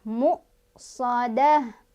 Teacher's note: tak marbutohnya kalau berhenti jadi ha sukun ya